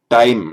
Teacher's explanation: When we as English speakers pronounce our t, the Indian ear hears it as a retroflex. It doesn't hear it as a dental.